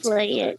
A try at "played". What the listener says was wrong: So here, the pronunciation should be played. Okay? Actually, we don't say this final vowel sound in the end. We don't pronounce that. So we say played, played.